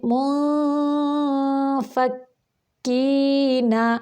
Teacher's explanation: ادھر دیکھیں اخفا ہو رہا ہے، اخفاء حقیقی، یعنی نون کے بعد حروف ہلکی، حروف یرملون اور حرف با کے علاوہ باقی 15 حروف میں سے کوئی بھی حرف آ جائے وہاں پر اخفا ہوتا ہے۔ تو ادھر ہم اخفا کرتے ہوئے فا کی شیپ دے کے اخفا کریں گے